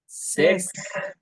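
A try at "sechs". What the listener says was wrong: সেক্স, জেক্স, এস এর উচ্চারণ হলো জে এর মতো, জ, জ এর উচ্চারণ জেক্স।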